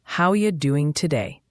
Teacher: sometimes reduces to doing dropping the g sound